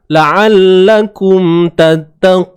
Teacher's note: bila kita berhenti, nun baris atas ni dah tak terpakai dah. So nun ni mati.